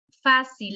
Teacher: en la palabra fácil la tilde sobre la a denota que el acento de la palabra recae sobre la sílaba fa